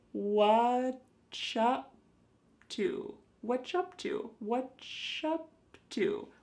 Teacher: what are has just been smooshed together